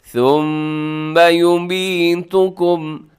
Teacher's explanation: ثم اس میں میم مشدد ہے، غنہ کیجیے گا